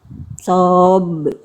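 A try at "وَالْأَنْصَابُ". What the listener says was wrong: Jangan ditekan. Jangan ditekan. Itu ada tasydidnya Bunda. Perhatikan, Bunda tadi gini baca. Wal ansab. Ansab. Langsung lempar. Jangan di ya, langsung lempar. Wal ansab. Ringan. Ansab.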